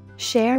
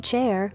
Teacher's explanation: the CH in Portuguese has the sound of SH